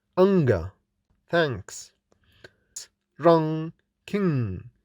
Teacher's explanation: Identification of the consonant ny or ing. This voiced nasal sound is made with the back of the tongue against vellum